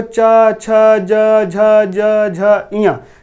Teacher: जब हम इसको बोलते हैं तो हमारी जीभ ऊपर की तरफ तालु में जाकर सटती है, इसीलिए तालव्य कहते हैं। या तालव्य अगर कहेंगे किस वर्ग में, तालव्य, इसका उच्चारण क्या है, तालु के द्वारा होता है।